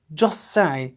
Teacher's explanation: British people tend to drop the T which appears at the end of the words.